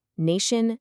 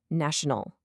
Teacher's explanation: the first and probably most common pattern is when a long vowel becomes a short vowel. A perfect example is nation with that long A sound.